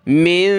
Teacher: नून के ऊपर जज़म यानी नून साकिन, इख्फ़ा करेंगे, नाक में आवाज़ पैदा करेंगे